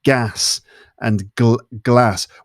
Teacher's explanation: the words gas and glass have the same vowel sound